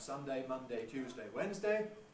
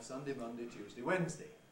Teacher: the names of the days of the week can be pronounced ending in day or weakened to D.